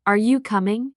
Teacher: In questions, are you coming? Your voice rises at the end. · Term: Intonation